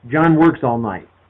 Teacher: Every word is a content word, every word is stressed.